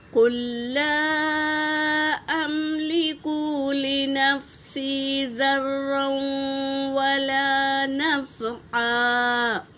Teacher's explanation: سکون والے لام کو ہم نہیں پڑھیں گے بلکہ تشدید والے لام میں قاف کو ملائیں گے۔